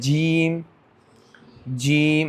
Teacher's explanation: جیم شین یا بیچ زبان تالو سے مل کر جیم شین یا ہے نا ادا ہوتا ہے، غیر مدہ یا غیر مدہ ادا ہوتی ہے۔